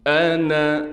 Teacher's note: حمزہ کو صاف کر کے نکالیں گے، اس نون کو بالکل نہیں کھینچیں گے